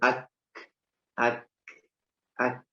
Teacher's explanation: perbatasan antara langit-langit yang keras dan yang lunak itu huruf kaf di situ